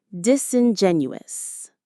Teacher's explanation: The main stress is on Jen.